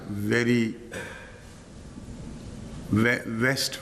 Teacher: یعنی دانت اور ہونٹ ملا کر ویری، ویسٹ وغیرہ جو چیزیں بھی آپ کہتے ہیں، عام طور پر ہمارے ہونٹ دانتوں سے لگ جاتے ہیں. عرب ہمیشہ صرف ڈبلیو بیان کرے گا.